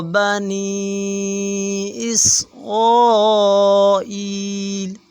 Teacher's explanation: بنی نون کے اوپر مد آ رہی ہے، اسے چار الف کے برابر کھینچیں گے